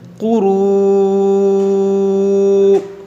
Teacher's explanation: واو مدہ کے بعد حمزہ ہے تو یہاں پر مد متصل کریں گے